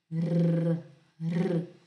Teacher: O R também, em italiano, o R ele vai sempre vibrar, sempre. Não importa se é só um, se é no começo, se é no meio, se é no final, se são dois, o R vai sempre vibrar, sempre, certo?